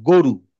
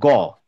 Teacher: থ্রোটটা চেষ্টা করতে হবে গ টা একটু ভিতরের দিকে ঠেলা দিয়ে।